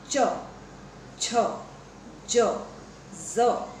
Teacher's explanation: તમારી જીભનો જે મધ્ય ભાગ છે તે તમારા તાળવાને સ્પર્શે છે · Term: તાલવ્ય ધ્વનિઓ